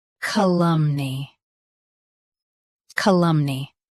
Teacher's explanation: Stress lum. Keep ni light and clear.